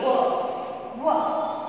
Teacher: इनको दंतोष्ठ्य बोलते हैं, यानी कि दांत और होठ दोनों मिक्स